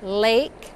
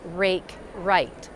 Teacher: for an R, we actually round our lips up too